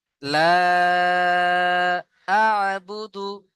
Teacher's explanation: তো এই মাদ্দে মুনফাসিল কেও দুই থেকে তিন আলিফ টান দিয়ে পড়তে হবে।